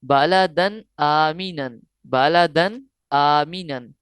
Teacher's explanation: यहाँ गुन्ना नहीं करेंगे, क्योंकि इख्फा का कायदा नहीं बल्कि इजहार का कायदा लग रहा है। हरूफ हल्किया में से एक हर्फ हमजा आया है।